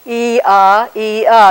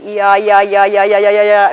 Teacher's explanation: But if you make this part sort of shorter, and maybe your tongue a little bit closer to the roof of your mouth, and say it very quickly, ya, ya, ya, ya, ya, ya, ya, ya, pretty soon you're saying ya, you're saying this. So Y is sort of a consonantal version of the vowel E.